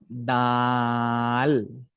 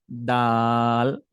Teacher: সময় লাগে সে সময় নিয়ে আপনার উচ্চারণটা করতে হবে যেমন দাল আমরা যখন দালটা উচ্চারণ করব প্রথম জাস্ট মারির সাথে লাগিয়ে দেন ছেড়ে দিব ঠিক আছে এবং মুখটাকে ফাঁকা হবে যেমন আমি বলতেছি আমার মুখের